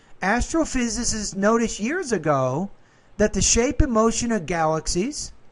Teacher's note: it makes sense that you would have rising tone on galaxies because that's the end of the thought group